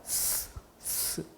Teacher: 그러면은 이 혀 끝에 공기가 흘러가면서 스치는 이 소리가 날 거예요. 그게 바로 마찰입니다. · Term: 마찰음